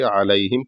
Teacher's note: अलैहिम के ऐन को हलक से अदा करना है और लाम के बाद या है हल्का सा खींच के अलैहिम पढ़ना है। यहां पर भी गुना नहीं होगा।